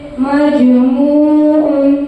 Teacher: مجموع جیم کے اوپر جزم ہے اس لیے جیم ساکن کا قلقلہ ہوگا کیونکہ جیم حروف کلکلا کے 5 حرفوں میں سے آیا ہے جیسے مجموع میم جیم زبر مج میم واو پیش مو مجموع عین دو پیش مجموع.